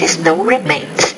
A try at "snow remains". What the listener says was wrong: And when you say when the snow remains, it's when the snow remains. Again, you're not clearly pronouncing that consonant cluster, that S and that N. You got to work on that a little bit.